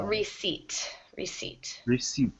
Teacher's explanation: the p is silent